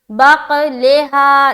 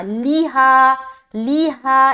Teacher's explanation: लाम को जेर की हरकत के साथ जो पढ़ रहे हैं तो ध्यान रहे कि जेर क्या हो, मजहूल ना होने पाए, बल्कि उसकी आवाज मारूफ रहे।